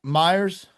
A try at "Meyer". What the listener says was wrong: It's without the S.